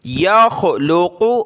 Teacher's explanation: خا اور قاف کو موٹا پڑھنا ہے